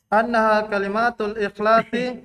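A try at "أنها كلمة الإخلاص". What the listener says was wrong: Annaha kalimah. Kalimah, bukan kalimah. Enggak. Masih salah. Itu berarti terbawa di lisan, kebiasaan. Bukan kalimat. Kalimah.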